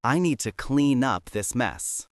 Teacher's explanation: Up starts with a U. When we say this naturally, the N moves over. It sounds like clean up.